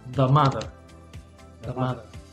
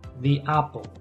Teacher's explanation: a veces se pronuncia the, como una I. Por ejemplo, the apple.